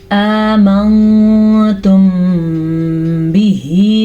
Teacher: जब कभी मीम साकिन के बाद हर्फ बा आ जाए तो होंठ बंद करके गुन्ने की आवाज़ पैदा होती है। इसे इख्फाए शफ़वी कहते हैं।